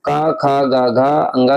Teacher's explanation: कंठ से उच्चारण होता है क ख ग घ अ ङ का